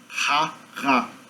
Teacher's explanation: Geralmente nosso R em português é pronunciado como uma fricativa velar.